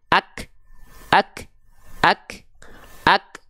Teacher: huruf yang dalam kondisi sukun itu bunyinya konsonan maka di sini kafnya enggak dibaca kakiku tapi hanya percikan nafas saja